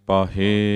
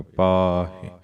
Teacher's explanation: ਹਾਹੇ ਨੂੰ ਸਿਹਾਰੀ ਹੈ ਜਿਹੜੀ ਲਘੂ ਮਾਤਰਾ ਹੈ, ਇਹਦਾ ਉਚਾਰਨ ਦੀਰਘ ਨਹੀਂ ਕਰਨਾ ਹੈ।